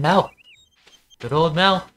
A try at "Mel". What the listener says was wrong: It with too much emphasis. I think it's more just Mel.